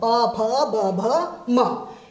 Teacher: ऊ प वर्ग प फ ब भ म, इन सब का उच्चारण स्थान है ओष्ठ। और इनसे बोले जाने वाले वर्ण कहलाएंगे ओष्ठ्य। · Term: ओष्ठ्य वर्ण